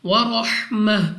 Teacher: را کو موٹا پڑھنا ہے منہ اور آواز کو کھول کر، اور اگر آپ یہاں پہ وقف کرتے ہیں تو آپ نے ہا کو واضح ادا کرنا ہے. ورحمہ.